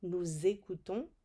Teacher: Did you hear that liaison from the S?